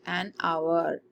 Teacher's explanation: So we'll not pronounce H because it is silent. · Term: silent H